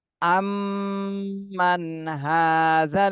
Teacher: সাকিনে স্পষ্ট করে পড়তে হবে গুন্না করা যাবে না আম্মান আম্মান হাজী হাতে এক আলিফ টান দিতে হবে